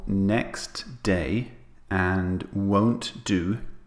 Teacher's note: When the T and D sounds meet, for example, next day and won't do, we delete the T sound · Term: connected speech